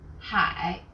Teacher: 上, The second syllable is made of an initial he, and a final ai, and a third falling then rising tone